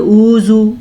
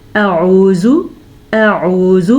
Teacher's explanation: पहले हमज़ा फिर आइन, दोनों के मखरज अलग अलग हों, दरमियान में गैप ना हो